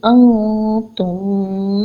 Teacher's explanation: یہاں پر ہم نون سکون کی آواز کو ناک میں چھپا لیں گے کیونکہ نون سکون کے بعد تا آ رہا ہے جو کہ لیٹر آف اخفا ہے۔